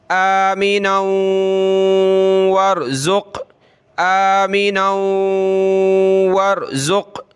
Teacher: یہاں ہم نے ناک میں آواز پیدا کرنی ہے کیونکہ یہ آگے پلس ہو رہا ہے اگلے لفظ سے